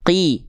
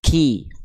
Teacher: Kalau qaf lebih dalam, nempel ke langit-langit yang paling dalam.